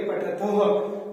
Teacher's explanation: जो विसर्ग की ध्वनि आती है उसे हमें ह का उच्चारण करना है। थ के पीछे विसर्ग लगे होते हैं इसलिए बोलेंगे पठथः।